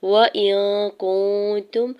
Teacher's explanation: حمزہ کی زیر کو نون ساکن کے ساتھ ملاتے ہوئے نون ساکن پہ اکفا کریں گے